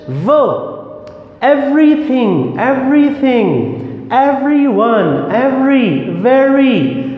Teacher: this is the labiodental sound which upper teeth and lower lips touch. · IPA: /v/